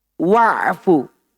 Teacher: hamzah wasolnya tatkala berada di tengah, dia tidak dibaca. Langsung dimasukkan ke huruf setelahnya.